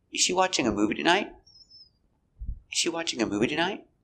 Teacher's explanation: the intonation goes up at the end because it's a yes or no question